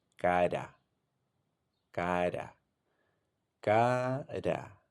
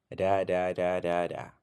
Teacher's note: the tip of the tongue makes a single brief contact with the alveolar ridge, that part right behind your upper front teeth. · It's a very brief tap done with the tip of your tongue right behind the upper teeth. As you see here in the picture, the tap takes place behind the upper teeth on the alveolar ridge. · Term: tapped R